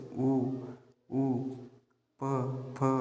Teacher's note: होठ आपल एकमेकांना चिपकतोय बोलताना तर त्यांना आपण होष्टवर्ण म्हणतो